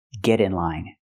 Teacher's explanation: We hear the pronunciation of T change to a fast D because it's between vowels. Not get in line, but get in line.